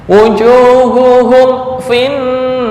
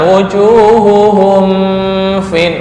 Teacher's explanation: Idhar syafawi, artinya nggak boleh dibaca dengung.